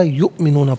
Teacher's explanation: یؤمنون میں حمزہ ساکن ہے اور اسے جھٹکے کے ساتھ ادا کیا جائے گا